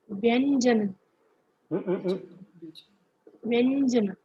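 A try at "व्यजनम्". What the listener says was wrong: Vyajanam. There is no nakaranta, na here.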